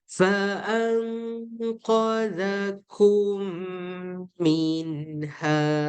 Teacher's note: mim kalau jumpa mim kita kena baca dengan dengung